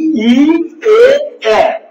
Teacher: একেবারে সামনে, একদম মুখের সামনে সম্মুখ অংশে এরা উচ্চারিত হয় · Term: সম্মুখ স্বরধ্বনি